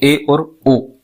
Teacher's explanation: अर्ध संवृत्त स्वर में जैसे मुख संवृत की अपेक्षा अधिक खुलता है। थोड़ा ज्यादा खुलता है इसलिए इसलिए हम अर्ध संवृत्त स्वर कह रहे हैं।